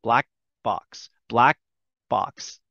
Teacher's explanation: i make the k shape but i don't say it